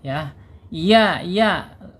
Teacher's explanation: Alisan ada di tengah-tengah lidah. Punggung lidahnya terangkat ya.